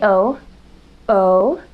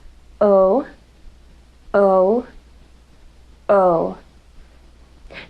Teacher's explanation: the lips are completely rounded for the production of the O sound